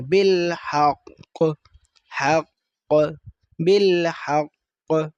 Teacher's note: جو شد ہوتی ہے اس کو ہم نے اس طرح واضح پڑھنا ہے کہ اس میں دو قاف ہیں